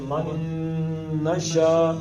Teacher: نون اگلے نون میں جائے گا، یہ ادغام ہو گیا تو اس کو ملا کے پڑھنا ہے